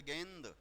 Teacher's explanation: जीभ जब ऊपर टच कर रही है तालो को तो मुख से निकलने वाली शवास का रास्ता बंद हो जा रहा है इसलिए शवास नाक के सहारे बाहर आती है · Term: अनुस्वार